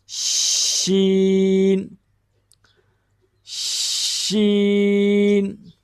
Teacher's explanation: شین کا جو مخرج ہے وہ ہے زبان کا درمیان والا حصہ سیدھا اوپر تالو کے ساتھ لگے گا تو اس سے لفظ ادا ہوگا شین شین۔